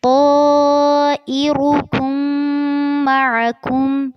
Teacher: طائرکم میں طا اور را دونوں کو پر کرنا ہے، اور جب آپ را کو پر کریں گے تو اس بات کا دھیان رکھنا ہے کہ آگے جو کاف آ رہا ہے وہ پر نہ ہو.